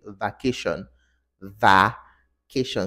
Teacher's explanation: So the schwa is elongated in such a way that it becomes an ah. The mouth opens really wide.